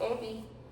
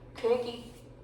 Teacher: 그 다음에 경상도 사투리로 죽이다를 쥐기다로 발음을 해요. 그러니까 후설모음에 있던 것이 전부 다 전설모음 쪽으로 왔죠. 그래서 전설모음화가 된 거예요.